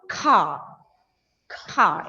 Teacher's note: when the ending letter of a word is r it almost goes silent